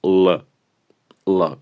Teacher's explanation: la L en su forma dura suena más gutural